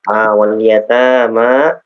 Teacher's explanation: ta'nya 2 harakat, mimnya 2 harakat